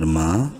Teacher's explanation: میم الف مد زبر ما، تین الف کے برابر میم کو لمبا کریں گے، مد کریں گے